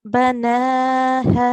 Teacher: So we will prolong this ha for around 2 seconds. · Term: huruful mad